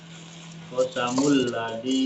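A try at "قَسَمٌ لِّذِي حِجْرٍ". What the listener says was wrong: Lidhi. Pakai li bukan la. Qasamul lidhi hijr. Pakai jim. Hijr ya, pakai jim.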